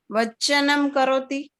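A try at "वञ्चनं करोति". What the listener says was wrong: It is not vachayate, it is vancha. It is vancha. Vancha. Vanchanam karoti.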